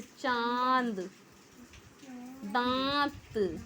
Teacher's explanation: अनुनासिक जिसमें नाक से आवाज़ निकलती है, जैसे चांद, दांत, तो इसमें चंद्र बिंदु लगाते हैं ना, तो जिसमें हम चंद्र बिंदु लगाते हैं वो अनुनासिक होता है, और जिसमें अंक की बिंदी लगाते हैं वो अनुस्वार होता है।